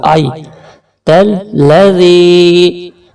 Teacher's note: یہاں پر کھینچنے کے ساتھ ساتھ ذال کو نرمی سے بھی ادا کرنا ہے